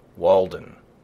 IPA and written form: ˈwɔːldən (Walden)